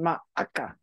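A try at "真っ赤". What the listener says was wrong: Yeah, well, it's makka. Yeah, there's no additional a. It's masokun ka. You have to do, yeah, it's similar how masao has to get an s.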